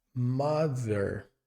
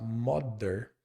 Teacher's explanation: O som do th ele é bem peculiar em inglês. É quando a língua encosta no dente de cima